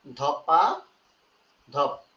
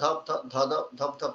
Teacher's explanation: দেখেন মাঝখানে একটা স্বরবর্ণ যুক্ত হয়েছে এবং একই স্বরের পুনরাবৃত্তি আর হয় নাই। ছিল ধপ ধপ, দুইটা ধপ ধপ ধপ ধপ ছিল, কিন্তু ওইটা হয়ে গেছে ধপাধপ। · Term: অসমীকরণ